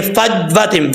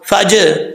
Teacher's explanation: یہ جو ج کی آواز آ رہی ہے یہ قلقلہ ہے